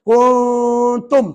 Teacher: nun tu, di ujung lidah jangan tekan. Kita kena letak tengah-tengah. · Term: ikhfa hakiki